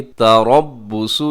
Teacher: را موٹا پڑھا جائے گا، صاد بھی موٹا پڑھا جائے گا